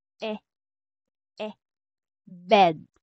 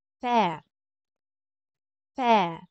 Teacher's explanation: Ang tunog niya sa letter E na letter will be like in bed. So, kumpara sa accent aigu, mas open or mas wide yung pagbuka ng mouth natin. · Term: accent grave